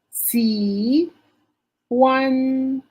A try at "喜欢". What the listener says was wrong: Remember, the second word has letter H. H. So we have to pronounce the sound of H. ha? The letter H. Don't forget.